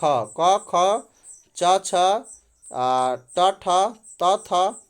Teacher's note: जिन ध्वनियों के उच्चारण में स्वर तंत्रियों में कंपन न हो, हर वर्ग का एक ला और दूसरा व्यंजन होता है। यानी हर वर्ग का पहला और दूसरा व्यंजन जो है स्वर तंत्रियों में कंपन नहीं होता है